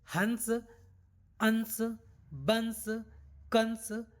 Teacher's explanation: किया जाता है आप बोल के एक बार देख सकते हैं हर बार हमारी जो ध्वनि निकल रही है वह नाक से उसका उच्चारण हो रहा है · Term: अनुस्वार